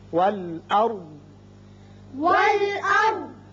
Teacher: را ہم پر پڑھیں گے، اس لیے کہ اس کے پچھلے حرف پر زبر ہے